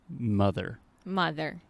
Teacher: super relaxed on that first vowel sound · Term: schwa